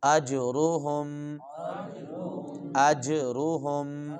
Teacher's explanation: ہم قلقلہ کریں گے اور را کو موٹا کر کے پڑھیں گے